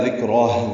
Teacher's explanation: ذال نرمی سے ادا ہوگا، کاف باریک ہے